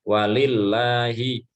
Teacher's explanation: Lillah, jadi tarkik seperti lam pada umumnya ya.